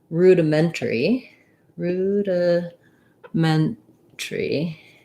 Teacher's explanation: rudimentary or rudimentary depending on if we reduce that syllable um the syllable stress is on the ment